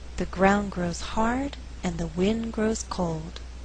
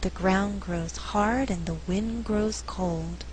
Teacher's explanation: In this faster reading, only 4 content words are being stressed: ground, hard, wind, cold.